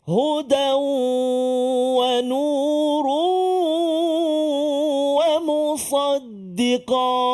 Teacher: Maka baca dia, idgham, masukkan bunyi tanwin ke dalam waw berserta dengan dengung. 2 harakat saja. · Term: idgham ma'al gunnah